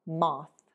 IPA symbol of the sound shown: θ